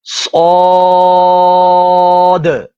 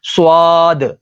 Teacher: اکثر لوگ اس کو پڑھتے ہیں سواد، تو یہ واد یعنی سواد کے بعد نا یہ الف کی جگہ واو کو پڑھ لیا جاتا ہے. تو یہاں پر واو نہیں ہے، آپ ہونٹوں کو نہ ہلنے دیں